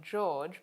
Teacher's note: We also have a voiced palato-alveolar affricate. So for example, the name George begins and ends with this sound